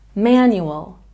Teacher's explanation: we have a stress on the first syllable in this word manual